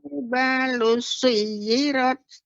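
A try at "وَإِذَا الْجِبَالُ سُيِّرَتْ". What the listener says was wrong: Iya, bagus, Nek.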